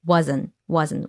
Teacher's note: right but that's why you don't hear it here wasn't wasn't we lose the T sound